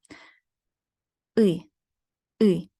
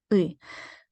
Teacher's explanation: Think tension plus the lips are not rounded. Ui. So the rough English equivalent could be found somewhere between the American her and the word bill. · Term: unrounded vowel